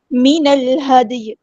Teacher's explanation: نون کو ہم نے لام کے ساتھ ملا دینا ہے، حمزۃ الوصل ہمارا ڈراپ ہو جائے گا ، لام یہاں پہ لام قمریہ، ہا کو سمپل پڑھنا ہے،